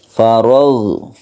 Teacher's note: Fa idza faraghta fansab. Ghain, huruf ghain ini bukan qalqalah, jadi jangan dipantulkan, lemes saja membacanya